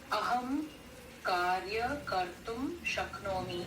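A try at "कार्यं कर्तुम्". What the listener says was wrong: हाँ कार्यम कर्तुम. वहाँ पे वो अनुस्वार है but it is hidden. हाँ कार्यम कर्तुम.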